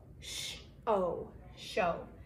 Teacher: S-H is a digraph, so it's sh-o. We don't say O-W as two separate sounds. We say it as one sound of long O